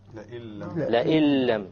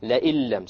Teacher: we have over here the noon sakina followed by a lam. And when we have this, then we drop out the noon and we pronounce it with the hamza immediately merges with the lam, and that is why we call it an idgham.